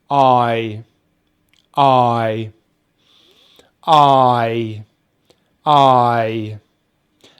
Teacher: we start with the tongue at the back of the mouth, but with the jaw open. And then we finish with the tongue at the front of the mouth with the jaw closed